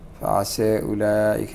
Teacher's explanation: فعسى هذه يميلها ورش بخلف عنه لأنه لا رأى فيها.